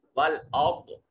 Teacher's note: را ساکن ہے، ماقبل مفتوح ہے، را کو موٹا کر کے پڑھیں گے۔ ضاد حرف مستعلیہ اس کو موٹا کریں گے۔